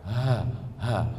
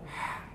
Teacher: Kalau ha, pegang dada, ada getar. Ha. Tapi kalau ha, tak ada getar.